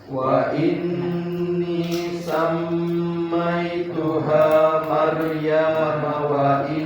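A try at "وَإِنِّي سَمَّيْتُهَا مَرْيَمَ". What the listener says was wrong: Hati-hati, ianya nggak panjang. Maryam wa in, Maryam wa in. Wa ini.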